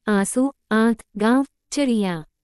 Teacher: अनुनासिक ध्वनि नाक से कम मुख से अधिक